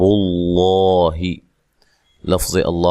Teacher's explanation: لفظ اللہ کو موٹا ادا کرنا ہے، اس سے پہلے حرف پر پیش ہے